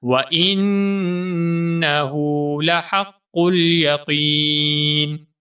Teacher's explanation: یقین میں جو قاف ہے اس قاف کو موٹا کر کے پڑھیں گے اور ایک الف کے برابر لمبا کریں گے کیونکہ یہاں پر یا مدہ ہے